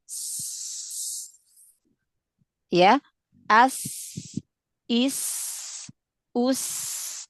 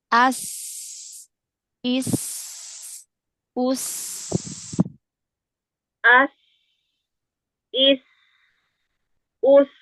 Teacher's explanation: makrotnya ujung lidah yang hampir bertemu dengan gigi seri bawah ya. Jadi dia nggak nempel banget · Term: sofir pada sinnya